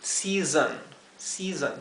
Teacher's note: Aquí el sonido de la S zumbada lo he diferenciado con una Z y una H. Y la O se pronunciaría con un sonido intermedio entre lo que sería una O y una E.